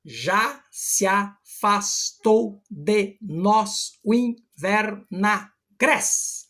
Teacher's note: Nós contamos até o gres, de agreste, que é a última sílaba tônica da palavra. Essa palavra é uma palavra paroxítona, portanto, a sílaba tônica é a penúltima.